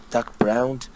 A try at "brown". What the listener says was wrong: But the color is brown, not browned. Brown.